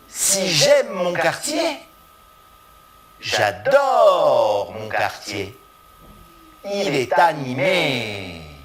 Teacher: Il est animé. La dernière syllabe du groupe rythmique est plus longue, mais toutes les autres syllabes sont identiques. Elles sont régulières, elles ont la même énergie, la même prononciation.